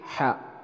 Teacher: Ha ini adalah keluarnya dari tengah tenggorokan atau disebut dengan wastul halqi